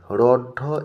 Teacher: রঢ একটি তাড়িত মহাপ্রাণ ধ্বনি, আর ডটা হচ্ছে তাড়িত অল্পপ্রাণ।